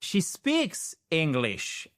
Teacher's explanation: Donc accentuation à English sur la première syllabe.